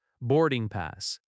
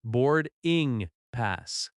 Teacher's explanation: The stress is on board and pass.